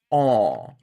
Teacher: So bacteria, and then it's got to go to aw, where my tongue has slipped completely down, and it's moved away from my teeth, and it's only raised in the back as the whole tongue moves down and back.